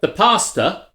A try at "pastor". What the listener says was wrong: not pasta. Not things there with tuna.